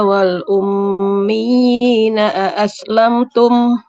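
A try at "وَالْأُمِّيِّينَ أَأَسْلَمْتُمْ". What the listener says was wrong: Wal ummiyina lebih kuatkan lagi untuk penekanannya. Wal ummiyina aslamtum.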